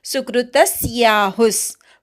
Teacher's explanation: त वर आघात हु च्या विसर्गाचा अर्धा स असा उच्चार करायचा सुकृतस्याहुस कृक्षर नाही त्यामुळे सु वर आघात येत नाही त वर